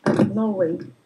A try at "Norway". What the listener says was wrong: Побольше р вертикальноязычного.